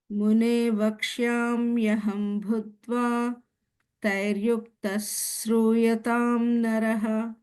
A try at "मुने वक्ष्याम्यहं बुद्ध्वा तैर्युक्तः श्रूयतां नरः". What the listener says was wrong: Perfect.